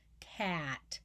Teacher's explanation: there's no nasality in cat at all